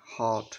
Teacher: আমাদের জিহ্বার অবস্থান একদম লো থাকে · আর এই ব্যাট বেট বেট শব্দের উচ্চারণ করার সময় আমাদের জিহ্বার অবস্থান দেখো, এটা একদম মিডলে থাকে, তাই এটা হচ্ছে মিড ভাওয়ালস। আর এই হট শব্দের উচ্চারণ করার সময় আমাদের জিহ্বার অবস্থান একদম লোতে থাকে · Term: লো ভাওয়ালস